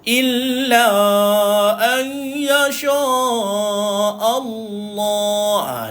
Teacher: Jangan kita baca Allah tuan-tuan. Hamzah dekat sini dia nipis. Yang tebal adalah kalimah Allah, lafzul jalalah.